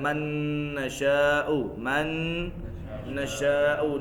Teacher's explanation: نون ساکن کے بعد نون آ گیا, ادغام بھی غنہ بھی